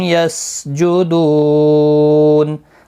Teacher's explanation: یسجدون دو واو مدہ ہے، 1 الف کی مقدار کے برابر کھینچ کر پڑھیں گے، اور وقف کی صورت میں نون ساکن پڑھا جائے گا، وقف اسکان ہوگا، مد العارض وقفی ہوگا، 3 سے 5 الف کی مقدار کے برابر کھینچ کر وقف کریں گے